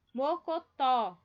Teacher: Aqui, ó, é a mais forte, é o tó.